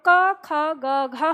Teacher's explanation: जब हम क वर्ग का उच्चारण करते हैं तो क, ख, ग, घ हम बोलते हैं, तो हमारे कंठ पर ही भार पड़ता है।